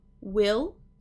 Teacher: this one will have a dark L. We'll go O after the vowel.